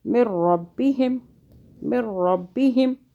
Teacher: مِن رَبِّهِمْ، مِن رَبِّهِمْ، را کو موٹا پڑھیں گے، را کے اوپر زبر آئے پیش آئے موٹا پڑھتے ہیں را کو